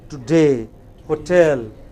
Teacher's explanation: a number of words following a certain pattern which are stressed only on the final syllable